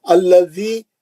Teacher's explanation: शर्रिल वसवासिल खन्नास, फिर ये खाफ भी जो है खमरी है, लाम पे जज़म आ गया, लाम पढ़े जा रहा है, ये खमरी है। अल्लज़ी, ये लाम पे तजदीद आ गई है ना, अल्लज़ी, उससे पहले का लाम नहीं पढ़ा जा रहा, ये शमसी है।